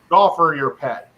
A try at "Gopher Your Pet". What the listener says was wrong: Gopher. Gopher your pet. There's no L in there. You're saying gopher, like.